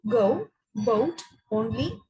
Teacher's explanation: the position of the tongue is in the position of the vowel a. After that, the tongue moves to a closer position of oo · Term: closing half diphthong